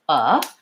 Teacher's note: not up it's not down it's not forward it's not back my voice comes on and my tongue is just very relaxed · my tongue is just resting in the middle of my mouth